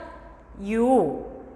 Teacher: 'i' 에서 'o' 로 흐르는 소리 는 'yo' 가 되겠죠 ? 그래서 ,' 요 '.